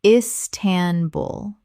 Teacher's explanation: Three syllables with the stress on the final syllable.